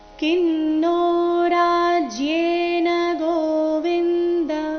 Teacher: ಕಿನ್ನೋ ರಾಜ್ಯೇನ ಗೋವಿಂದ ಗೋವಿಂದ ಅಲ್ಲಿ ದ ಪೂರ್ತಿ ಇದೆ ಮತ್ತೆ ರಸ್ವ ಇದೆ. ಗೋವಿಂದ ಅಂತ ದ ದೀರ್ಘ ಮಾಡಬಾರ್ದು